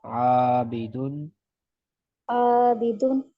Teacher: دال کے اوپر تنوین ہے اور آگے عین آ رہا ہے حروف ہلکی میں سے، اس وجہ سے یہاں غنہ نہیں کیا جائے گا